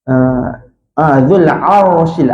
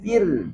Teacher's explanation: Makhraj ra ni kita guna belakang lidah tah. Ra tebal belakang lidah sedikit ke tengah kena langit-langit.